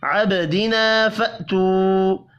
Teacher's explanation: با ساکن پر قلقلہ کریں گے. الف اور واو مدہ ایک الف کے برابر کھینچ کر پڑھے جائیں گے.